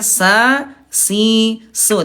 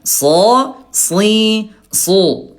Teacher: kalau sin ayo Bunda dia istifal turun pangkal lidahnya, kalau sod dia al istila terangkat pangkal lidahnya